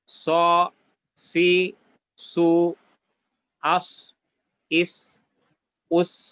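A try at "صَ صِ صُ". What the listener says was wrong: সদের যে উচ্চারণটা এটা কি কোনো কোনো ক্ষেত্রে সিনের থেকে পার্থক্য হইল না, একেবারে সিনের মতোই শোনা গেল। ওই বিশেষ করে জের পেশ এবং জজমের অবস্থায় তো অনেকটাই সিনের মতো মনে হয়। তো এই সিনের থেকে পার্থক্য করতে হবে কিন্তু। স, সি, সু, আস, ইস, উস, আস, ইস, উস।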